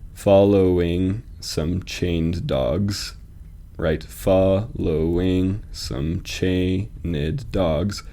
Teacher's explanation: Chained and dogs are both being emphasized and so it feels like there should be an unstressed syllable between them